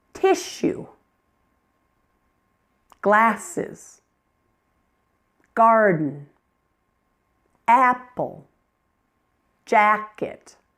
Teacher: You'll notice each of those is 2 syllables, and it's a thing that I can see and touch. And each one is stressed on the first part of the word.